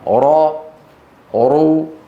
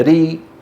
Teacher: إن كانت مفتوحة أو مضمومة يفخمونها، راء رو، وإن كانت مكسورة يرققونها، ري.